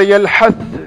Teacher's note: sa bertemu dengan za. Mana sa itu tidak dibaca. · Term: mutajanisain